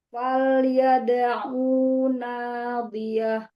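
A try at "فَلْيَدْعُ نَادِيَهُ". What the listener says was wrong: Au-nya pendek, Bu. Au. Faliyada'u nadiyah. Faliyada'u.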